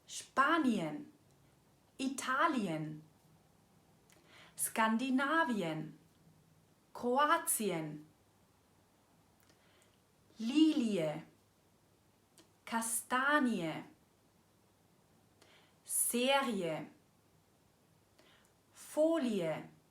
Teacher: All diese Wörter sprechen wir eben nicht mit einem Langen “i” aus, sondern mit einem i-e, also diese getrennte Version.